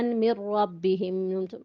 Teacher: نون ساکن کے بعد را مشدد آ گیا، ادغام بلا غنہ